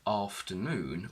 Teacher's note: if we look at the word afternoon we will see that the primary or main stress is on noon